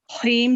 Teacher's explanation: हीम जो है ये भी वो मध्य वो क्या होगा आरिस, ये 3 से 4 सेकंड को लंबा करके मीम साकिन करेंगे